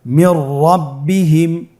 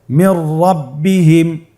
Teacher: নুন সাকিনের পরে র হরফটি এসেছে। নুন সাকিনের পরে যদি র হরফ আসে তাহলে নুন সাকিনকে পরবর্তী হরফের সাথে মিলিয়ে গুন্না ছাড়া পড়তে হবে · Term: ইদগামে বিলা গুন্না